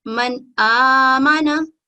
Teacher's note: نون ساکن کے بعد الف ہے تو ہم نون ساکن کو غنہ نہیں کریں گے اور کلیئر پڑھیں گے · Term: حروف اظہار